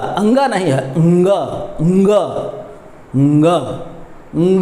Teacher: तो क ख देखिए बोल के देखिए क ख ग घ क्योंकि यह कंठ वर्ण है ना ग होगा ना य होगा तो ये भी कंठ से ही उच्चारण पंचमाक्षर का भी उच्चारण कंठ से ही होगा